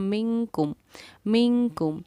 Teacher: نون ساکن کے بعد حروف اخفا میں سے کاف آ رہا ہے، اسی لیے ہم نے نون ساکن پر اخفا کیا